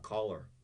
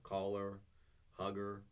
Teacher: basically we do not pronounce the h